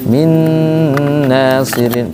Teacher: nun dengan mim dengan sendirinya udah masuk ke hidung dia tanpa disuruh-suruh